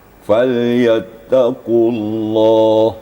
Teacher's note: Qafnya tebal, kemudian lafaz Allah juga taghliz, tebal.